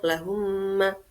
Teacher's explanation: dinamakan syafawi karena mim keluar di antara kedua bibir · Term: idgham syafawi